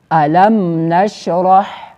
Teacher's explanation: نو هلته میم د خپل مخرج نه بغیر د غنې نه ویلی شي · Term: اظهار شفوي